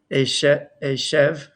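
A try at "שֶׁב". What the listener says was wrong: Sev, because the with sin, if it's not on the right, meaning if the dot is not on the right, it's a sin.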